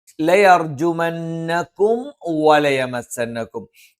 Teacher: ഇവിടെ സുക്കൂനുള്ള മീമിന് ശേഷം വാ വന്നാൽ വാവും മീമും രണ്ടും ചുണ്ടിൽ നിന്ന് വരുന്ന അക്ഷരങ്ങളായതുകൊണ്ട് മീമിനെയും വാവിനെയും വ്യക്തമായി ഉച്ചരിക്കണം